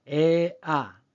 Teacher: 혀끝이 밑으로 내려오면서 목구멍으로 들어갑니다